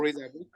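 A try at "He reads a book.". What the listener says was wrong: Reads. I listened read, no reads. You have to pronounce the S, okay? When you have he, she, or it, or someone similar.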